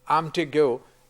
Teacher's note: the m sound, which is the weak form of am, is a clitic form in English